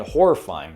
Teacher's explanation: you can kind of hear that like the single r is transformed like a double r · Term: rolling r sound